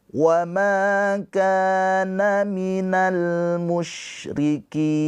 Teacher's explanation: ma panjang 2 harokat karena ada pemanjangnya yaitu alif. Alif sebelumnya harokatnya fathah mad tabi'i.